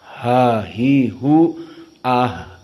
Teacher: sangat dalam makhrajnya aqsal halq